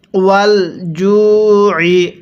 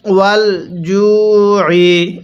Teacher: আইনটা পড়ার সময় গলার মধ্যে একটু চাপ দিয়ে পড়বেন, তাহলে আইনটা সহি শুদ্ধ উচ্চারণ হবে।